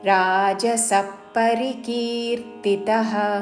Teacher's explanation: హర్షశోకాన్వితకర్త హర్ష రాకి మూర్ధన్య షావత్తు పక్కన తాళవ్య షో హర్షశోకాన్వితకర్త విసర్గ ఉచ్చారణ ఖ లాగా చేస్తూ హర్షశోకాన్వితకర్త రాజసః పరికీర్తితః ఇక్కడ విసర్గ ఉచ్చారణ పక్కనున్న పదములోని ప అందుకుంటూ ఫ లాగా చేస్తూ రాజసః పరికీర్తితః.